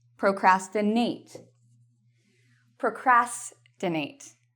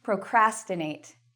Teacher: you'll notice the cras, procrastinate, is the loud part